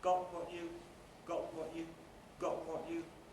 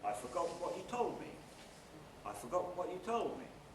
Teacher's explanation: a high level head where the onset is high and everything following it is high